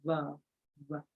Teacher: you notice how your vocal cords vibrate, and then it's a voiced sound